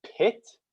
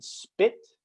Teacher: when you say pit, the P in pit is very aspirated. There's a lot of air coming out. But the P you say in spit is very unaspirated. There's not a lot of air coming out at all when you say that. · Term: aspiration